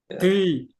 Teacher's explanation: Coba kasih ujungnya tuh agak lebih banyak yang menempel di apa namanya di gigi seri itu, biar dia ada sifat itbaq, yaitu tebal, tebal yang lebih.